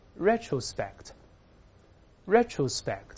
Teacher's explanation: 注意名词重音在前面